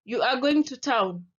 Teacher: can you hear my voice has risen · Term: Rising intonation